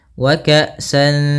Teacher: Maka cara membacanya yaitu kita samarkan suara tanwinnya kepada huruf dal. Wa ka'san, seakan-akan langsung melafalkan huruf dal. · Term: ikhfa